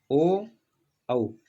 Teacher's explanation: कंठ और ओष्ठ दोनों से जिसका उच्चारण होता है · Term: कंठोष्ठ